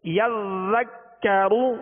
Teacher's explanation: را پر پیش ہے تو را کو پر پڑھیں گے